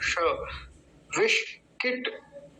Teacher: मूर्धन्य शकार है, जिसको हम षटकोण वाला श बोलते हैं